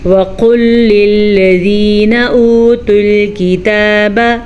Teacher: वाव साकिन से पहले पेश है, इसे तो हम खींच के पढ़ेंगे, लेकिन इस वाव के ऊपर कोई हरकत नहीं है, तो ये वाव बग़ैर खींचे पढ़ी जाएगी और बग़ैर किसी हरकत के पढ़ी जाएगी। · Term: वाव मद्दा